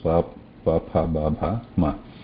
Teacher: There is no tongue involved here, just the two lips, pa, pa, pha, ba, bha, ma. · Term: oshtha